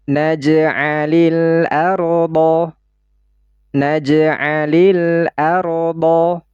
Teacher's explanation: Alif lam qamariyah atau izhar qamariyah. Jadi suara lamnya ini harus kita baca secara izhar, secara jelas. Ya, terdengar dengan jelas huruf lam sukunnya.